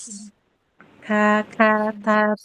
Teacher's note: kaf dan ta dia tidak qalqalah karena tidak syidah plus jahr. Dia mah syidah plus hames.